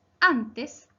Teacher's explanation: Antes se acentúa en la penúltima sílaba an, por lo tanto es grave.